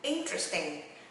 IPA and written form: ˈɪn.trəs.tɪŋ (interesting)